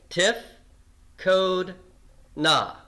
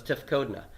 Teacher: I have three vowels and the accent is not on the final one and if the accents not on the final one I have